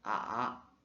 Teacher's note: le troisième ton, c'est un son qui descend puis remonte